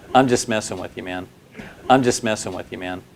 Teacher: The S in just links to messing, to sound more like smessing, smessing. This linking helps you to sound more fluent since it helps you avoid any stopping or that choppy speech sound that can occur. · Since the T is the center of three consonants, it's a three-consonant blend, STM. In this case, the T is just deleted. It's easier that way. · The S in just links to messing to sound more like smsing.